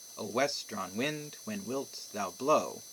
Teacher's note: With all the appropriate punctuation, this sounds like a normal iambic meter.